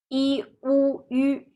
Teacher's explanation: your lip position should be u and yu are round lip, while I, your lip can relax. Tongue position, I and yu, the tongue is in the front, while u, your tongue held back.